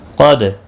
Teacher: قاف مستعلیہ ہے، پر پڑھا جائے گا، اور دال ساکن پر قلقلہ ہوگا۔ حروف قلقلہ 5 ہیں، قاف طا با جیم دال، یاد رکھیں جب بھی ان کے اوپر جزم ہوتی ہے، ساکن ہوتے ہیں تو اس وقت ان پر قلقلہ ہوتا ہے، باقی کسی بھی حرف کے اوپر قلقلہ نہیں ہوتا ہے ان 5 کے علاوہ۔